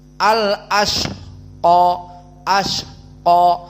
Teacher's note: Dan juga al ashqa hams dikeluarkan nafasnya. Al ashqa, ashqa ada sh.